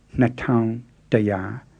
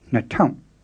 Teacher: the low tone on town is often changed to a creaky tone